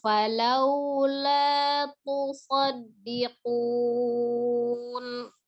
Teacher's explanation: Tasdid di huruf dal, kemudian lanya tidak kepanjangan ya.